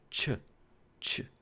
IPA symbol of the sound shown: t͡ʃ